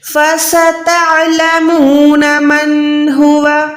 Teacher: عین حلق کے درمیان سے نکالیں، الف اور عین میں فرق رکھیں. · سین جو ہے سیٹی والا حروف ہے، وسل ساؤنڈ پروڈیوس کریں.